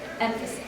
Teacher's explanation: so the emphasis is on the first syllable